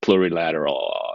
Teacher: it would be a bit more tolerable if it wasn't for the vocal fry